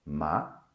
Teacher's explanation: The third tone starts high, then it goes down, then it goes up again, like you're riding your bicycle or you're walking through a valley.